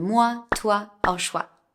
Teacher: The sound wa, like in water, is written OI in French. Please don't pronounce the O and the I separately, it's just wa